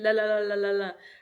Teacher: The tongue is tapping the roof of the mouth.